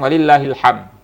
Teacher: aja enggak ada enggak ada pantulannya pantulan hilang huruf Dal ya kalau tidak ada pantulan itu menghilangkan huruf Dal